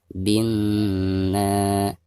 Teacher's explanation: Jadi dari bacaan bi langsung ditasydidkan ke huruf na ya, sekaligus digunakan karena nun yang bertasid adalah huruf gunnah ya.